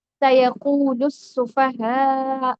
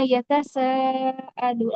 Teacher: سیقول السفہاء، جو سیکنڈ پارا ہے اس کا پہلا جو آیت ہے اس میں ہے نا سیقول السفہاء. تو اس میں جو سین ہے وہ کنیکٹ کر رہا ہے پچھلے حرف کے ساتھ، لام کے ساتھ. وہ تھوڑا سا اسٹریس اور ایمفسس کے ساتھ پڑھا جا رہا ہے